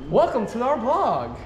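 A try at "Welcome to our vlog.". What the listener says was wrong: In the vlog. You said blog.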